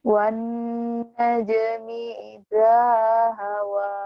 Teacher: nunnya nah ditahan gunnah